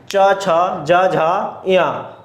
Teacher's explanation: च यानी कि तालव्य, यानी कि मुंह के अंदर का पिछला हिस्सा यूज होता है।